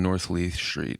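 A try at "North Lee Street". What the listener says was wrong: Lee Street. I thought you said Leith. I'm like, what's a Leith?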